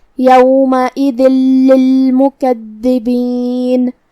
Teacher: ہم یہ تنوین کو لام میں ملا کے بغیر غنہ سے لیکن تشدید کے ساتھ یہ حکم کو ادا کریں گے · آخر میں نون پہ رکیں گے تو اس پہ جزم سے رکیں گے، لہذا ہم نون کو ظاہر کریں گے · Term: ادغام بغیر غنہ